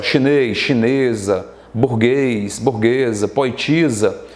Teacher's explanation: Então, esse esa, tá? Porque um S entre duas vogais tem som de Z